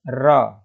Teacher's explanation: उच्चारण करते समय जीवा में दो या तीन बार क्या होता है कंपन होता है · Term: लुंठित व्यंजन